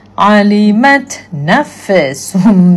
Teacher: Harfu fa tak boleh buat dia jadi qalqalah.